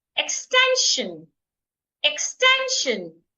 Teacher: I'm stressing the second syllable